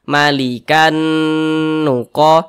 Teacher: cara membacanya itu dengan cara memasukkan kemudian disertai dengan gunnah. Jadi dia didengungkan. Nah, jadi yang dimasukkan bunyi tanwinnya ini kita baca malikan nuqah. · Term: idgham bi gunnah